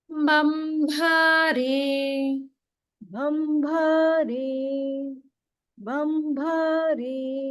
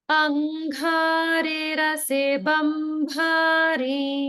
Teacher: notice the Mahapranas dha in angha and also bha in bambha